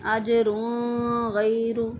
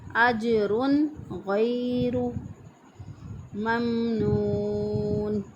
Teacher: را کے اوپر جو ہے وہ تنوین نہیں کرتے بلکہ اس کو اخفا کر کے پڑھتے ہیں